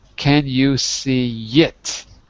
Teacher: so you'll notice between two vowels that's really what this is between two vowels we sometimes add the consonant ye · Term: magic y